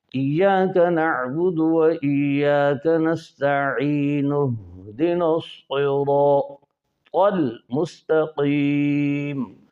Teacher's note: اور اس کو مع بعد سے ملا کے پڑھیں تو نستعین ہے، نون پر پیش ہے، اہدنا کا حمزہ وصلی ہے، درمیانی کلام میں حذف ہو جائے گا